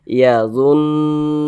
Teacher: Nu dibaca panjang, mad tabi'i panjangnya 2 harokat.